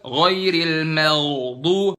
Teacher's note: Ghainnya bener di situ posisi ghain, cuman terlalu dalam, kelamaan, kepanjangan.